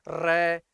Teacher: ਇਸ ਅੱਖਰ ਨੂੰ ਬੋਲਦੇ ਸਮੇਂ ਜੀਭ ਤੇ ਸੌਰੀ ਗਲ ਕੀ ਹੁੰਦਾ, ਥੋੜਾ ਜਿਹਾ ਵਾਈਬ੍ਰੇਟ ਹੁੰਦਾ ਹੈ, ਰੈ ਜੀਭ ਕੰਬਦੀ ਹੈਗੀ ਹੈ। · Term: ਕੰਬਵਾ